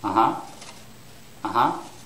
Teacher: for yes it's the second syllable which is stressed